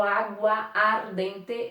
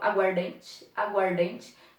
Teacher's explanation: Nós não temos um A sendo pronunciado, eu não falo água ardente, eu falo aguardente, aguardente. Juntei dois As em um apenas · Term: aglutinação